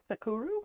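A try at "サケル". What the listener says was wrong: Sakeru. With an E. Sakeru.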